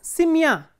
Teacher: So, if the ending is stressed, for example, simya. In simya, the ending is stressed, the stress is on ya